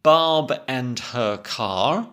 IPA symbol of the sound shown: ɑ